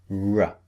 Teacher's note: The lips pushed out and the tongue curled back.